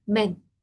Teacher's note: La E no está al final, hay una consonante. Entonces, si la E está entre dos consonantes, ahí ya es como una E en español, más sutil.